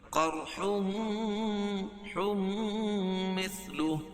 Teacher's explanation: تنوین کے بعد ادغام مع غنہ کے 4 حرفوں میں سے میم ہے تو یہاں غنہ کر کے پڑھیں گے۔ قرح مثلہ، وقف کی صورت میں الٹا پیش کو ہائے ساکنہ سے بدل دیں گے، مثلہ سے مثلہ۔